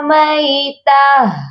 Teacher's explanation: جب بھی گول والی تا کو ہم وقف کی صورت میں پڑھتے ہیں یا گول والی تا پر آ کر رکتے ہیں، وقف کرتے ہیں، تو ہم تا کو نہیں پڑھتے بلکہ ہم ہا کو ساکن کرتے ہیں، ہا کی آواز پر آ کر رکتے ہیں، ہا کو ساکن کرتے ہیں۔